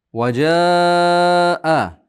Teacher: bu yerda mad muttasil to'rt besh harakat miqdor cho'zing. Maddi muttasil.